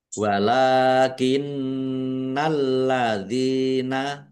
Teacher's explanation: Nun tasdid bacaan ghunah atau mendengung ditahan biar tampak mendengungnya. · lamnya ada tasdidnya dibaca dobel · Lam fathah berdiri, mat tobi'i, panjang 2 harokat. Nun tasdid, bacaan gunnah atau mendengung, ditahan biar tampak mendengungnya. Walakinnalladzina, lamnya ada tasdidnya, dibaca double.